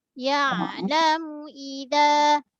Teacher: Bibir. Keluarkan dari bibir, kemudian muncungkan mulut untuk raikan baris depan.